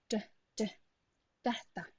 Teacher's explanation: Your tongue goes to your alveolar ridge, the tip of the tongue perhaps on the upper teeth though, and then you push the air through.